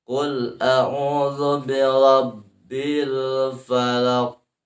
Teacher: karena diwaqaf qalqalah kubro, maka ada sidah di sana